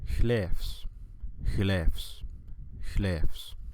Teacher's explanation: la B se transforma a una F